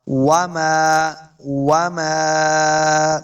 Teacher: میم کے آگے الف ہے، اس کو 2 حرکات لمع کرنا ہے۔ وَمَا تُقَدِّمُوا، قاف کو موٹا پڑھنا ہے، قاف حروف مستعلیہ سے ہے، دال کے ساتھ ملانا ہے۔